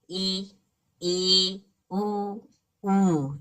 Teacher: जिन स्वरों के उच्चारण में मुख द्वार लगभग बंद रहता है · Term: संवृत